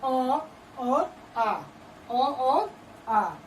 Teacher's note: सबसे पहले कंठ में आवाज आती है